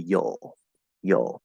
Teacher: this can actually reduce to yol yol which many people would probably say is an l colored schwa